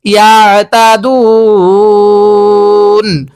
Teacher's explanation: ওয়াকফের সময় তিন আলিফ টান দিতে হবে মধ্যে আরজি হিসাবে